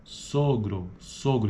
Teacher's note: ela é uma arredondada posterior média alta